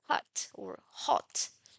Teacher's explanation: it is voiceless, but it takes the voicing quality of the following vowel or the vowel that it precedes.